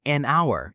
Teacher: we say an hour, even though H is a consonant because the H is silent. It sounds like hour.